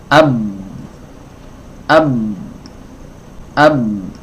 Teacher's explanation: suara pengin mengalir tapi makhrajnya tertutup rapat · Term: syiddah